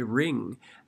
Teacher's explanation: So we kind of E it because we're flattening out the mouth to say that ng sound, and so it changes the quality of the vowel · it sounds very much like you're saying an E sound instead of an I sound. You can carefully say ring, but it sounds a little bit too nasal, like you have a cold. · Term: allophone